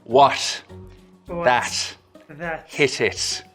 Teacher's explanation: soft closure at the tip of the tongue or not even really quite a full closure at all there's a slit left for the air to escape through